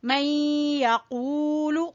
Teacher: میں اور غنہ جو کرنا ہے وہ اس کی وجہ سے، نون اور یا کے ملنے کی وجہ سے. مئی یقولو، قو کو کھینچیں گے واو مدہ کی وجہ سے